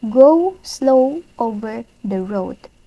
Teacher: the repetition of the long o sound